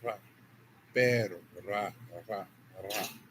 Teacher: with a single tap of the tongue in Spanish